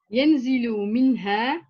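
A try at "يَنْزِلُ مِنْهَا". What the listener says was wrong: Très bien.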